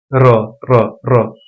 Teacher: क्योंकि जब हम र का उच्चारण करते हैं तो कंपन उत्पन्न होता है जैसे र र र कंपन उत्पन्न हो रहा है इसलिए इसको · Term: लुंठित